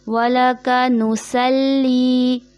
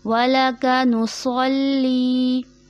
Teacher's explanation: यहाँ सौद है, उसकी जगह सीन की अदायगी हो जाती है, उसको बारीक कर दिया जाता है